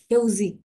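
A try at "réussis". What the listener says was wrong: ঘেউজিগ না ঘেউসিখ double S sound হ্যাঁ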